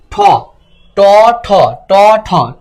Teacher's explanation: ঠতে কিন্তু বাতাস বেশি লাগে, তাহলে ঠ কি মহাপ্রাণ।